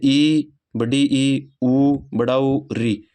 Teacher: हम बात करें संवर्त स्वर, वे स्वर जिनके उच्चारण में मुख वृत्त के समान बंद सा रहता है, अर्थात मुख सबसे कम खुलता है, संवर्त स्वर कहलाते हैं।